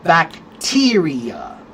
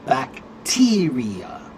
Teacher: Or the word bacteria. It's on the 2nd syllable.